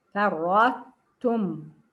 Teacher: I raise my tongue for the إطباق and استعلاء and I come down on the ta. I don't say فرطتم. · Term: incomplete إدغام